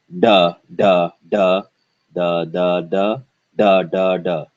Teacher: t it's the same d in dhanyavad touches the teeth whereas the hard d sound the the tongue goes upward and touches behind the bump · You notice for the English D, the tongue is more forward in the mouth and it's flatter, whereas for the Hindi hard D sound, it is curved upward and is behind the bump. Therefore, it sounds harder than English. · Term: retroflex d sound